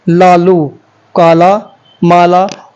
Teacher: ल का उच्चारण करते समय जीभ के दोनों तरफ से वायु का निष्कासन होता है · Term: पार्श्विक व्यंजन